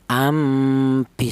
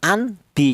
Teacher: Jadi apabila ada nun mati ini bila berjumpa dengan huruf ba maka cara bacanya nun mati ini diganti dengan huruf mim. Lah kata-kata diganti itu namanya iklab.